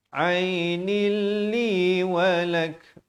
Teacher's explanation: Wa qalatim ra'atu fir'auna qurratu 'ainil li walak. Di sini ainil idgham bila gunnah, asalnya nun tanwin di bawah bunyi ainin, tapi datang lam jadi ainil